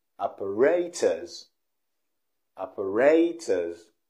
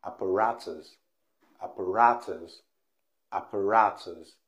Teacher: british pronunciation operators operators but the american pronunciation is different because the sound is rey in the british pronunciation and in the american pronunciation the sound is ra